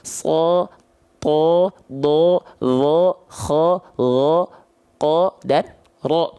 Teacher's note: Kalau ada huruf berharokat fathah, kita sudah tahu dasarnya dia dibaca dengan vokal A. Kalau dia berubah vokalnya menjadi O, maka huruf tersebut adalah huruf yang tebal